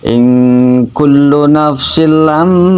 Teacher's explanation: suara mimnya itu berdengung cukup lama. 1 harokat jalan hadri, 2 harokat jalan tadwir, 3 harokat jalan tartil. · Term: ghunah musaddadah